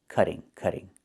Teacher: Not cutting, but cutting. And in America, we change the t to a fast d when it's between vowels like this.